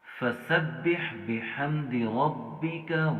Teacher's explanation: را ہم نے موٹا پڑھنا ہے، ٹھیک ہے، اس کے اوپر اپنی حرکت ہے، اور اس کے بعد دیکھیے گا غین کو بھی ہم نے موٹا پڑھنا ہے، وہ آلریڈی موٹے حروف میں سے ہے۔